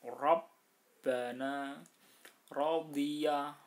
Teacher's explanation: Seluruh ro yang berharokat fathah itu tebal.